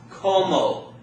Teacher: the accent is gonna fall on the second-to-last syllable